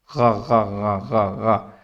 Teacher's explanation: غرارہ کریں گے، تو جو ساؤنڈ پیدا ہوگا اس جگہ سے یہ لفظ نکلے گا۔ اور اسی گرگل کو بیٹا آپ نے توتلی زبان والا سمجھ لینا ہے، غا غا غا غا غا، ٹھیک ہے؟ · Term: غائن